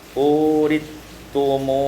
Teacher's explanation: idghamul sa fis ta, diidghamkan sa pada ta maka menjadi uritumuha.